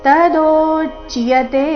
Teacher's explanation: ದೋ ದೀರ್ಘ ಬಂದು ಸೌಮ್ಯ ಆಘಾತ ಮುಂದೆ ಅರ್ಧಚ ಪೂರ್ತಿಯ ಸಂಯುಕ್ತ ಅಕ್ಷರ ಬಂದಿದೆ